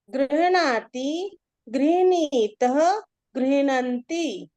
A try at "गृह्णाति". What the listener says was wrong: सत्यं। यदि दक्षिण भारतीयम् उच्चारणं करोति चेत् गृह्णाति गृह्णीत एवं भविष्यति।